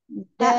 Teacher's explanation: makhrajnya ujung lidah ke gigi seri atas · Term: huruf da